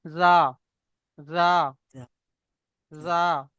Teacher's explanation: জিভের আগা, আমাদের যে জিহ্বা আছে, জিভ আছে, জিহ্বা, জিভের আগা এবং সামনের উপরে এবং নিচের দুই দাঁতের আগা, দুই দাঁতের আগার সাথে লাগিয়ে উচ্চারিত হয়